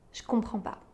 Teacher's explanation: Devant les sons [f], [k] [p], [s], [t] on va remplacer le son « je » par un son « ch ».